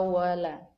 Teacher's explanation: Ada alif mati di depan huruf la. Jadi disebut dengan mad tabi'i dan panjangnya 2 harakat.